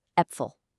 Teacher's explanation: This one's the easiest of the bunch. It simply makes an eh sound, just like the E in the English word bet. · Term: A umlaut